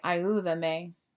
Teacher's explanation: The U gets the stress, so you would say ayúdame